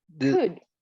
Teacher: remember that we don't pronounce the L. So we say could.